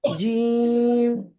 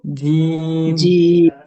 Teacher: জিম তিন আলিফ পরিমাণ টান হবে